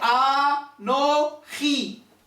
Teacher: Et les 3 syllabes sont vocalisées de 3 voyelles longues.